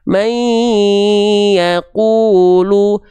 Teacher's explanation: Meleburkan an ke bunyi ai. Meleburkan bunyi nun sukun an kepada bunyi ai huruf ya. Hukum tajwidnya IG, idgham bi gunnah, dengungkan leburkan selama 2 harokat.